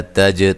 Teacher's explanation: تا کو باریک، جیم پہ قلقلہ